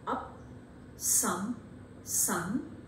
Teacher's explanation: because it is produced by the main body of the tongue it is nearly half open and at the same time you find that this is unrounded and a neutral one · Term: central vowel, neutral vowel